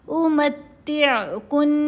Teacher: میم کو تا سے ایک دفعہ ملایا، پھر تا کو عین سے دوسری دفعہ ملائیں گے تو تا 2 دفعہ پڑھا گیا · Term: مشدد حرف